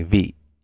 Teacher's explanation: this is a creaky tone in Hmong, the M. So they say "vi," and then in Vietnamese they say "vi." So that's a similar word.